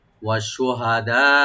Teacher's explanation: আর লাস্টে যে হামজা আছে, হামজাটাকে আমরা রাইট দিয়ে পড়বো, হামজা স্পষ্ট যেন হয়